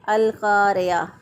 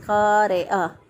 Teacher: زیر جو ہے اس کو مجہول ادا کرتے ہیں قاریہ، تو ایسا کرنا غلط ہے۔